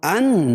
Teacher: ان نون مشدد ہے، اس میں غنہ ہوگا